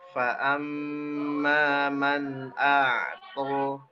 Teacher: ada nun sukun ketemu hamzah. Ya, dia dibaca jelas. Jangan dengung, jangan samar, ya. Jangan dibacanya, jangan ditahan ya.